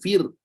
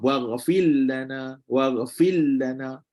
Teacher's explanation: Kalau baca ra ni mesti kena ada getaran. Tak boleh buang getaran dia. Kalau baca contoh waghfir lana, kena bagi bunyi ra tu.